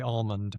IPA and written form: almənd (ALMOND)